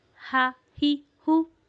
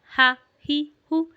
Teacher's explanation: हा भी जो है वो वस्ता हल्क यानी हमारे गले के दरमियानी हिस्से से अदा होता है।